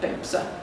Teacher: So the last syllable is just a schwa sound, the stress again in the first syllable.